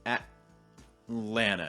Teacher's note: t sound or a stop t sound you're basically tightening your throat a little bit and then not releasing your breath until you get to that land so instead of saying at land you're doing at lana and